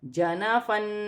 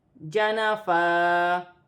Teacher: دو زبر کی تنوین وقف کی صورت میں ایک الف مدہ میں بدل جائے گی، جیسے جنا فا۔